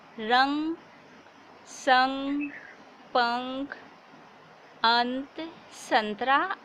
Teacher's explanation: अनुस्वार का उच्चारण नाक से किया जाता है